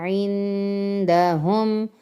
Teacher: نون ساکن کے بعد حروف ہلکی کے علاوہ کوئی حرف ہے تو یہاں پر غنہ ہم نے کرنا ہے